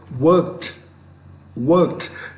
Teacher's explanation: it is realized as t because the word ends in a voiceless sound